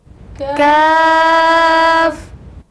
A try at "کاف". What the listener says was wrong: کیاف نہیں، کاف،